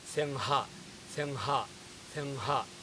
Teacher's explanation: I am about to say singa, but at the last second, I am dropping ga, instead I am saying ha.